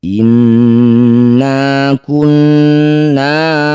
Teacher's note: nun bertasydid disebut bacaan gunah musyaddadah dengungkan bunyi nun dua harakat